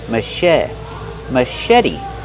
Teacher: Put the stress on the second syllable and make the vowel like red in bed. Machete. And the T is a fast T because it's between vowels.